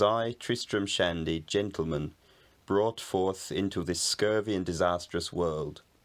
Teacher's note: The speaker in this recording sometimes pronounces the r and sometimes doesn't. · What's called rhoticity, pronouncing a r wherever it appears in spelling rather than deleting it in certain situations like most southeastern English people do nowadays.